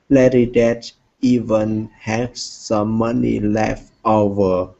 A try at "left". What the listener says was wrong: Okay, make sure to pronounce that T.